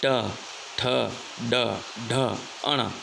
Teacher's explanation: उपला दांत अने ताड़वाना भाग वच्चे जीभ अडाड़ीने तेनो उच्चार करवो पड़तो होवाथी तेने मूर्धन्य तरीके ओळखवामां आवे छे। आ उपरांत र छ अड़ अने स्वर रूप पण मूर्धन्य छे।